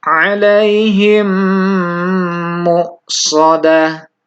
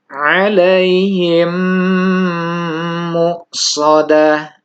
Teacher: dibacanya adalah dengan menyuarakan mim seperti rangkap dengan tetap menggunakan dengung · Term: idgham mimi